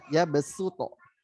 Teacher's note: Kalau bacaan kita, ya riwayat Hafiz dari jalur Syatibi yang baca mad jaiznya 4 harokat, maka bastoh itu harus dibaca dengan sin. Padahal tulisannya sod kan. Jadi bastoh.